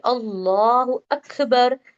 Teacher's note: منہ بھر کے پڑھتے ہیں پورا، ہے نا. یعنی کہ یہاں پہ ہونٹ گول تو نہیں ہو رہے لیکن ہم اسے موٹا پڑھتے ہیں نا لا کو